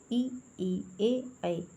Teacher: और अवृत्ताकार, जिसमें होठों की आकृति अवृत्ताकार होती है, मतलब वृत्त नहीं बनता है, गोल नहीं बनते हैं